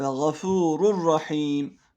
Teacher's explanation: Nunu ra harfine dönüştürüyoruz birbirine katıyoruz ve şeddeli bir şekilde okuyoruz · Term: iddiamı bilaizsiz